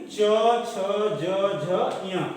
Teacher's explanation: तालु से, यानी हमारे मुख के ऊपर ये जीभ जो होती है ऊपर वाले हिस्से में टकराती है। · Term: च वर्ग